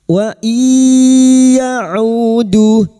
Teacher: Nun sukun bertemu ya idgamunah masuk pada huruf ya dan mendengung selama tiga harakat.